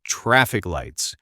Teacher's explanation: The stress is on traffic.